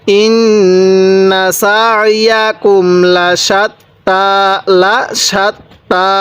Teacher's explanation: নুনের মধ্যে গুনাহ করা আমাদের ওয়াজিব, কারণ নুনের উপর তাজিদ আছে, এজন্য আমরা গুনাহ করব।